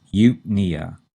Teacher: notice the stress is on the second syllable and it's on the knee in nia